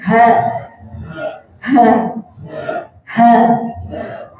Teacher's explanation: ha niku kalau di An-Nadiyah harus ada getaran di dada. Mengucapkan ha kok dadanya belum bergetar, kayak ketemu sinten.